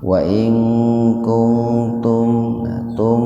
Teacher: Jadi betul-betul dibaca idhar, dibaca jelas mimnya itu di bibir. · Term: idhar safawi